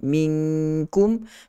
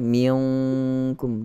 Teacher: jangan kita tarik ke belakang ataupun ke pangkal lidah, dia hadapan sedikit daripada pangkal lidah huruf kaf ini. Minkum ringan saja, dia tidak miung, ada sedikit saya dengar, tak banyak pun.